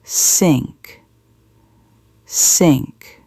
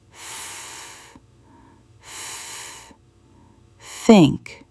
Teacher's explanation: She sticks her tongue out between her teeth. She blows air. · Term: th sound